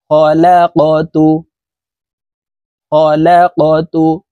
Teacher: এখানে দেখুন, এই যে কফ কলকলার হরফ উপরের দিকে ধাবিত করে ধাক্কা দিয়ে উচ্চারণ করব